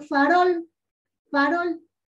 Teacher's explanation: en farol, farol, la sílaba tónica es rol. Porque tiene la mayor fuerza de voz.